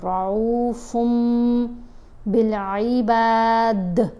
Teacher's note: تو نون کی آواز ہے، اس نون کی آواز کو میم سے بدلیں گے، رعوفم بالعباد، دال کے اوپر کلکلا کریں گے۔